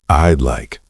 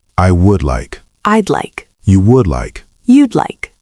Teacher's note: It sounds like a tiny D sound at the end of I.